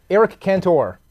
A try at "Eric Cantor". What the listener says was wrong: Eric Cantor. Yes. Yes, you are. And it's not. Cantor. No, you don't stress the O at the end. Eric Cantor.